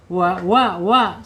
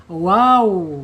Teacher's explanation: Asyafatain dua bibir ya. Prosesnya dari belakang bibir kita sampai ke depan jadi agak monyong.